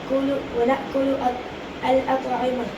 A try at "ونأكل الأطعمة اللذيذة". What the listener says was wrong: الاطعمہ پر اعراب دیں. الاطعمۃ اللذیذۃ.